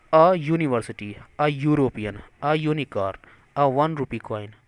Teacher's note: यूनिवर्सिटी में यू य आ गया, यूरोपियन में यू, यूनिकॉर्न में यू, 1 रुपी में व आ गया